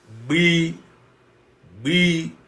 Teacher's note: You seem to suck in the air and release it. The sound in phonetics is called bilabial. Bilabial. That is, the two lips come together. B. So, but the air with which I pronounce it seems to be sucked in, not released explosively.